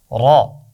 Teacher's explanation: शाबाश, रा की आवाज़ है रा, मोटी आवाज़ है। लेकिन ये वा और ता की तरह मोटी नहीं है, बस थोड़ा सा मोटा करना है आवाज़ को।